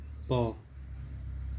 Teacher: तो दोनों होंठ टकरा रहे हैं आपस में, तो ये होंठों की सहायता से बोले जाते हैं।